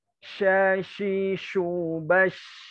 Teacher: Makhraj huruf shin itu di tengah lidah, bukan di bibir